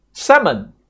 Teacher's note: Salmon, right, the L is silent